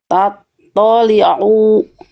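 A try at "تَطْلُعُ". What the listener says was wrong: Tekan lebih kuat Bunda si ainnya ya. Oke, nanti Bunda tinggal latih huruf ain. Jadi ain itu dilafalkan lebih ngeden Bunda. Ya, ain itu dilafalkan lebih ngeden.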